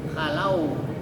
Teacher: Tapi kalau hurufnya berbaris fathah sebelumnya, maka itu ee madnya di baca lembut, lunak, tidak dibaca mad seperti tabii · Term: mad lin